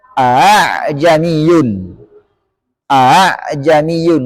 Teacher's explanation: huruf hamzah yang ditashil Hamzah yang diucapkan antara Hamzah dan Alif